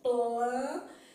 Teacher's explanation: Eu faço L porque eu coloco a língua atrás do dente